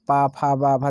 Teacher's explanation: देखिए जितने वर्ण है हमारे होठों से टकरा रहे हैं, पा, फा, बा, भा, मा हो रहा है, तो ये ओष्ठ व्यंजन हो जाएंगे